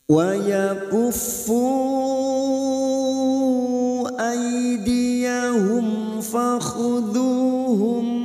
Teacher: Mim sukun bertemu fa idhar safawi. Mim sukun dibaca jelas tanpa mendengung